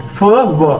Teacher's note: हम फ की साउंड और व की साउंड प्रोड्यूस करते हैं तो हमारे जो होंठ होते हैं, नीचे वाले होंठ होते हैं, वो ऊपर के दांतों के साथ टच करते हैं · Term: लैबियोडेंटल साउंड